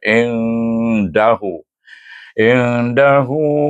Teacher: Di sini huruf dal. Maka dibaca dengan ikfa kubra dengan dengung dua harakat.